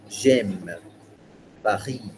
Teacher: they put a stress on the last sound of the word, each word.